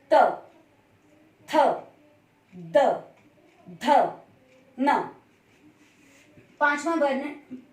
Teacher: जब हम इन 5 वर्णों को बोलते हैं तो जो हमारी जीभ है वो हमारे दांतों के बीच में आती है। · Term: त वर्ग